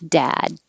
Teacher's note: you don't have to release the d if it's all by itself